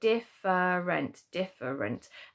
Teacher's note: you actually don't hear that fur in the middle, you just hear diff and runt, so you get different without that e.